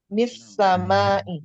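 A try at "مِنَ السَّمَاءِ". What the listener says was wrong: Nunnya kemana kalau begitu? Minas sama jadi mis sama ya. Apa ilmunya kalau nunnya jadi tidak terbaca?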